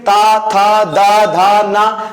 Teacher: ये जो ता वर्ग है, इसका उच्चारण होता है दंत से